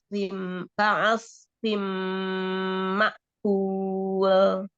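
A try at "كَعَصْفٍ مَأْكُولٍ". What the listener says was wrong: Kul. Agak mundur sedikit, Bu. Jangan kul. Mundur sedikit, maksudnya daerah tempelannya, ya. Kul. Ibu rasakan. Kul. Nah, Ibu rasakan di langit-langit Ibu itu ada coba ya, pakai lidah ya dirasain ya. Coba dirasain di langit-langitnya itu ada kayak garis-garis gitu. Kayak polisi tidur.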